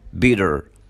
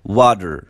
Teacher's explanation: التاء ساوند لو جت between two vowels بنقلبها بنخليها داء ساوند. يعني ما بقولش بيتر بقول bitter، ما بقولش water بقول water.